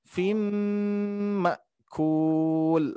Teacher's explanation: Hamzah itu mempunyai sifat sidda, tertahan dan juga jahar, tidak mengeluarkan nafas ya.